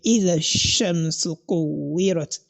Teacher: We are not going to say إذا الشمس كورت, but you are going to say إذا الشمس كورت. That is, you are going to merge the sound of the zal together with that of shin